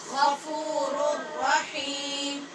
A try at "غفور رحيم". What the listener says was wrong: غفیم نہیں پڑھنا، ناک میں آواز نہیں جائے گی. غفور رحیم. رحیم. غفور رحیم.